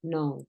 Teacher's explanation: La K no suena, no dices cano, dices no.